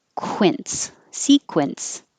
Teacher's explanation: segway but the real word is spelled like this segway sequence this q u you have to round your lips